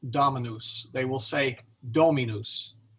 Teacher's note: the accent is on that first syllable